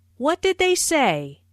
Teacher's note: Notice how say is emphasized, but the intonation falls at the end of the word. This is a what question, so the intonation falls at the end.